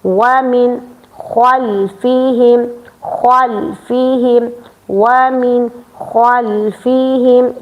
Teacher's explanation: نون ساکن کے بعد چونکہ خوا حرف حلقی آ گیا ہے، ٹھیک ہے، تو آپ نے نون ساکن پر تھوڑی سی آواز ظاہر کرنی ہے، اس کو اظہار کہتے ہیں